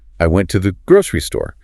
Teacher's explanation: grocery often retains the stress over store because it's the more specific defining detail. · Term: nuclear stress